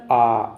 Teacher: इससे ज्यादा खुलेगा इसके बाद है विवृत स्वर विवृत में आ इसके उच्चारण में मुख सबसे अधिक खुलता है सबसे ज्यादा खुलता है